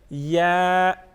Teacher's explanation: یا کو ایک الف کے برابر کھینچ کے پڑھیں گے